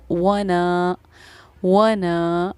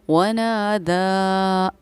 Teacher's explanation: और पढ़ने का तरीक़ा इस वाले मद को ये है कि 2.5 अलिफ की मकदार के बराबर हम इसको खींचकर पढ़ते हैं। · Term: मद मुनफसिल